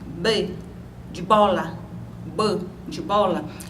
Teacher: ela vai dizer que esse fonema é um fonema bilabial porque B quanto a sua produção a seu ponto de articulação